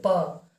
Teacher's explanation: प दोनों ओठ सट रहा है